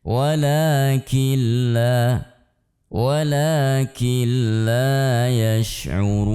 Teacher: Nun sukun yang bertemu dengan lam maka tidak dibaca dengan ditahan. Walakil, ini harus kita perhatikan, tidak dibaca demikian, tapi cukup kita hilangkan nunnya, kemudian kita sisakan lam tasydid.